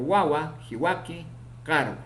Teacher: Consonante o semiconsonante bilabial sonoro ocurre en posición inicial, medial y final